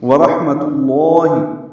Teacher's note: واو ہونٹوں کی نا تمام گلائی سے ادا کریں گے۔ را پر ہا ساکن وسط حلق سے ادا ہوگی اور اس پہ ہمس ہوگا۔